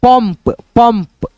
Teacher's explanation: अब उच्चारण करके देखो म के रूप में आएगा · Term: बिंदी